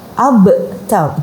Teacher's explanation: Jadi ada qalqalahnya, ada pantulannya